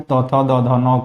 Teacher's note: त, थ, द, ध, न को दांत से बोलते हैं।